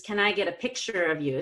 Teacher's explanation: about it yet so it's new so picture gets the PPS it's a yes/no question so I go down on pick and then I go up for the remainder of the sentence